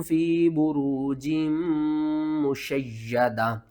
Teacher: یا کے اوپر آپ نے سختی کرنی ہے، میم کے اوپر آپ نے غنہ کرنا ہے